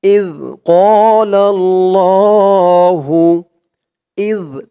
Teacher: জালের আওয়াজটা একদম নরম পাতলা হবে জিহ্বার মাথা উপরের দাঁতের মাথার সাথে লাগবে এই জালের উচ্চারণটা করার সময় এক আলিফ টান জবরের পরে খালি